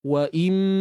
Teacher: bawa suara kita pergi ke hidung tanpa kita kontrol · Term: dengung